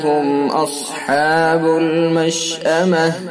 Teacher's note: میم ساکن کے بعد حمزہ ہے، لہذا اظہار میم ساکن ہوگا، اظہار شفوی